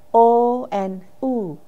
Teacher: our lips will be rounding when we produce the sound O and U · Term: rounded